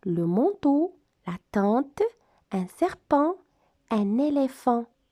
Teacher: On va ouvrir grand la bouche et on fait résonner les cordes vocales qui font entendre la voix, mais en faisant passer la plus grande partie de l'air par le nez. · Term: le son en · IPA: [ ã ]